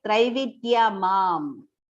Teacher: Do not pronounce that. It is just the anuswara pronunciation, partial ma. So it has to be like Traividya mam.